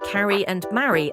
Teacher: In British English, words like carry and marry are pronounced with the /ae/ sound.